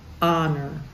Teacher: and we don't do that in English we hold back honor we start with the O and just know that the H is there but we don't say it out loud